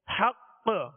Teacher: مشدد حرف جب اس پر وقف کیا جائے تو اس میں خوب قلقلہ ظاہر ہوگا، آواز جو ہے زیادہ لوٹتی ہوئی محسوس ہوگی